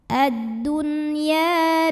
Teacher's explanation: karena ada Alif didahului baris fathah maka panjang ya-nya dua harakat